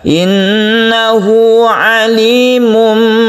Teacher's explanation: Qasirah, Alimum bidzatis-sudur adalah Iqlab. Saat Tanwin bertemu Ba, suara tanwin berubah menjadi Mim atau 'm' yang mati. Ini disebut Iqlab dan bentuknya juga memanjang.